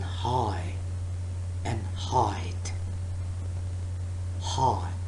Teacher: not actually constricting or blocking air flow for this her sound you are just exhaling a little bit harder than you would for a normal vowel sound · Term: glottal sound